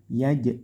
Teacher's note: jimnya di sini dipantulkan yaj karena ini qolqola qolqala sugro